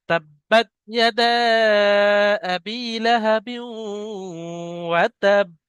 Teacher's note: আর ফের আয়াত করার কারণে বা সাকিন, আর হরফে কলকলা পাঁচটি, কফ ত বা জিম দাল, তাই বাকে কলকলা করে পড়তে হবে ধাক্কা মেরে